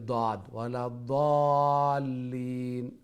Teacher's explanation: জিহ্বার গুড়ি যে সময় উপরের মাড়ির সাথে উপরের দাঁতর সাথে গিয়া লাগবো